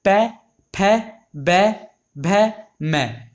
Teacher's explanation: ये हमारे ओष्ठ से बोले जाते हैं